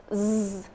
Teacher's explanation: come together and the steam of air push them apart and create vibration they are called voiced consonants